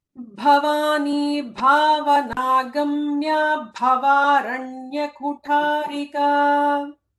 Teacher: All the namas start with bha, which is the Mahaprana bha, not ba. So ensure, and this is very important, to ensure that that bha comes out really nicely.